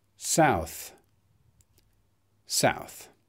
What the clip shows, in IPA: saʊθ